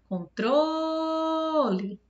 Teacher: Então, mor é a sílaba tônica. Em controle, eu demorei mais no tro.